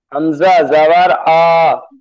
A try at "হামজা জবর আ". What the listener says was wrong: জি টান হবে না হামজা জবর আ এরম টানবেন না